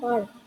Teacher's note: huruf R sering kali menghasilkan suara vokal panjang A, seperti A yang diperpanjang